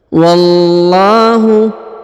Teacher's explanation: Wallahu ya, huruf lam pada lafzul jalalah, huruf wa langsung masuk ke sini ya, ke huruf lam, langsung sambung, kemudian ditahan dan ditekan, kemudian dipanjangkan 2 harokat